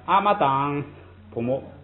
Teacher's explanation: 他发堂送气费劲儿，他就阿妈党普木